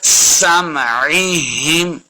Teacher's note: سین پہ سیٹی کی آواز آئے گی ، سمعہم، ہا کا سائن ہے، پڑھیں گے ہا زیر میم